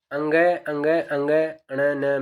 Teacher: ये नासिक व्यंजन है इनका नाक से उच्चारण होता है